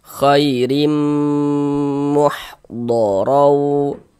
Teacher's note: Kemudian didengungkan. Jadi di bagian rimnya itu suaranya itu kita tahan ya, kita panjangkan sebentar sepanjang 2 harokat.